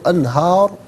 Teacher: من تحتها الانہار، را پر پیش را کو پر کر کے پڑھیں گے، اور جب یہاں وقف کریں گے تو را ساکن ہوگا، تو ما قبل ہا پر کھڑا زبر ہے تو اس صورت میں بھی را ساکن کو پر کر کے پڑھیں گے. من تحتها الانہار، یہاں وقف کریں گے تو انہار پڑھیں گے.